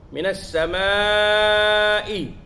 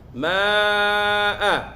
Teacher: Minas samai. Alif dan hamzah bertemu dalam satu kalimah mad wajib. Jadi kena baca dengan panjang.